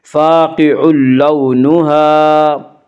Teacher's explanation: واولین کو نرم آواز کے ساتھ جلدی پڑھا جائے گا